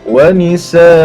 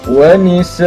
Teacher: Kalau kita berhenti, kita waqaf pada 2 baris di atas, hamzah fathatain 2 baris di atas, maka kita kena baca panjang sebanyak kadar 2 harakat. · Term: waqaf pada fathatan